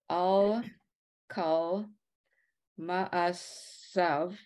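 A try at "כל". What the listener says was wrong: Look at the, I'm not quite sure how you pronounce the vowel under the kaf, second to last word.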